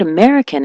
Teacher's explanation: the word American, as you know, is stressed on the me, American. So she was saying Americano.